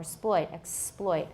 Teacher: The stress is on the second syllable, ploit, or exploit.